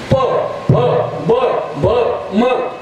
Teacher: प फ ब भ म ओष्ठे ओठाला ओठ लागला